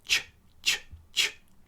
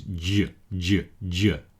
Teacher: The unvoiced one is ch, ch, ch. The voiced one is j, j, j. See, that second one is much further down in my throat.